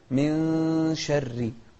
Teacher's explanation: هو حرف من أحرف الإخفاء وهو الشين، أتى بعد النون الساكنة، فيطلقون على هذا الحكم الإخفاء. فنقول من شر، من شر يعني نخفي النون ونقول من شر.